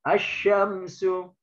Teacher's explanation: Alif lam syamsiyah. Lebur kepada shin bertasydid.